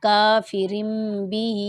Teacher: با زیر بی، کافرم بی ہا کھڑی زیر ہی، کافرم بی، یہ میم کی وجہ سے ہونٹوں کو آپ نے ملا کر پڑھنا ہے،